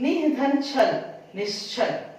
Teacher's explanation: तो कह धन चित कश्चित, इसमें देखिए निह धन छल निश्चल, यहाँ भी छ है, विसर्ग के बाद क्या है छ है, इसलिए विसर्ग तालव्य श में बदला है।